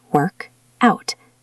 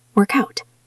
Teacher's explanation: Really push that K onto the next word.